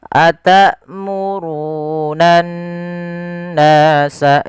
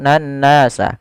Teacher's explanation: kita menahan suara n-nya sepanjang 2 harakat. Atamurunan nasa, jangan langsung nan nasa. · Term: gunnah